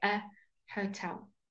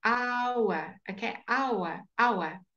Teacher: It begins with an H, but the sound begins with a ah. We leave out the H at the beginning.